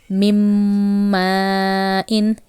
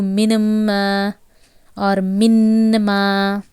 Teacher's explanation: nasalization is there. You are reading with the help of your nose.